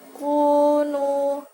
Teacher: Kunu bacaan matobi'i, yaitu domah bertemu dengan wawu sukun panjangnya 1 alif atau 2 harokat